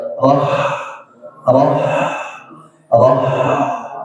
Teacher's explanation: Huruf ha itu makhrajnya ada di mana? Tenggorokan. Bagian bagian tengah ya